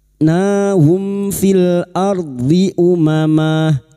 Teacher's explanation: Nahum, mim sukun bertemu fa. Mim sukun dibaca jelas tanpa mendengung, idhar safawi.